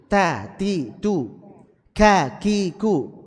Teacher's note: kalau antum ucapkan ta, ada hamasnya nggak itu? Ada, tapi syiddahnya lebih dominan.